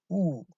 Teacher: the lips are very rounded for the vowel U